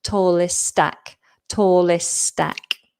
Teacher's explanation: For those of you who are quite far along in my pronunciation course, you'll recognize that combination from some of the articulation exercises. So it is possible to articulate st but in natural flowing speech it's not necessary. Um so we would just remove one of them and and put those two words together. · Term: double st